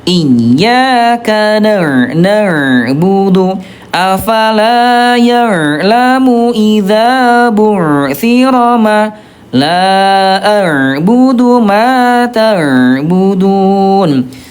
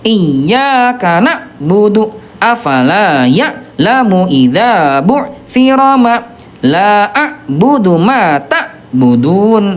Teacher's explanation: huruf ain dia tawasud tengah-tengahnya, sedikit mengalir antara rokhawah wa syiddah, antara lemah dan kuat